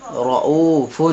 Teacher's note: کیونکہ را پر زبر آ رہا ہے، اس لیے یہاں را پور کر کے پڑھیں گے